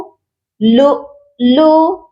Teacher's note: لام حمزہ پیش لو، اس کے بعد لام پیش لو، لو لو، پہلے والے حمزہ پر ہم جھٹکا دیں گے کیونکہ وہ ساکن ہے۔ اس کے بعد حمزہ لام زیر ال، دوسرے والے حمزہ کو لام ساکن کے ساتھ ملائیں گے، لو لو المکنون۔